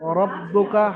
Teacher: রয়ের উপরে জাবার, রকে পুর করে পড়তে হবে